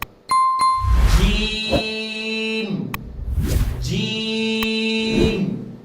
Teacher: اس کو منہ کھول کے اچھی طریقے سے آپ نے پڑھنا ہے. اس کی آواز ناک میں نہیں جانی چاہیے